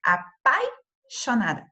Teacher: uma vogal que é pronunciada com mais intensidade e uma semivogal que é pronunciada com menos intensidade menos força